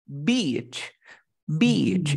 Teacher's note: Pero tienes que hacerlo larguito.